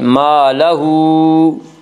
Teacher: ہمیشہ مدہ ہوتا ہے، الف سے پہلے ہمیشہ زبر ہوتا ہے۔ الف مدہ کو ایک الف کے برابر کھینچ کر پڑھیں گے